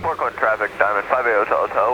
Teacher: I don't know why people on the radio do this vocal fry thing.